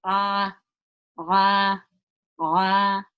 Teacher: the ain is actually pronounced from the middle of the throat